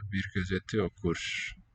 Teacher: This final R clearly devoices there.